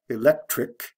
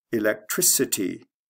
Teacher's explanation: add the ity you don't have to change the spelling but it goes from a hard c electric to a soft c electricity like from a k to an s sound